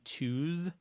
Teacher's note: the U for example is called the close back rounded vowel